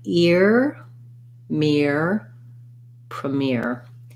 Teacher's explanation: it has the ear diphthong so you have a tense e sound gliding into your american r